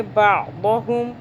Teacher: बादहुम, आइन को हलक से पढ़ेंगे, दौद को मोटा करेंगे। बादहुम, हा को ये जो है हलक के सबसे निचले हिस्से से अदा होगा